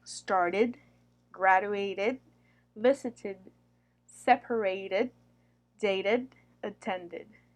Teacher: If the verb base ends in a T or a D sound already, then the ed ending sounds like an ID or UD. It is pronounced as an extra syllable.